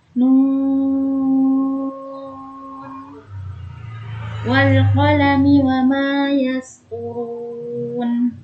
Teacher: Itu ada nun yang Ana baca sampai 6 harokat panjangnya. Kenapa? Karena nun tersebut termasuk huruf-huruf muqatta'ah.